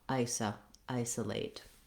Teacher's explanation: we have an unstressed syllable for our letter O, so that sounds like it's the vowel schwa